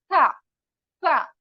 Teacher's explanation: तरह अदा करेंगे थोड़ा हमारा मुंह क्या है फैला हुआ और हमारी जबान की नोक यह जो ऊपर के दांत है वहां पर टच होगी और थोड़ी सी बाहर एक गेहूं के दाने जितनी बाहर